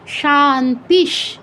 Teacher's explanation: এটার উদাহরণ হচ্ছে শান্তি মন্ত্রের শেষে আমরা শান্তিশ, শান্তি, শান্তি বলি না, বিসর্গের পর তালব্যস্য থাকায় প্রথম শান্তি, বিসর্গের পর তালব্যস্য আছে, তাই বিসর্গের জায়গায় তালব্যস্য হসন্ত উচ্চারণ করতে হবে